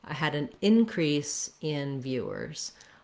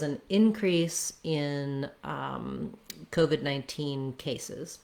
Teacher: if i say um in increase as a noun then i have first syllable stress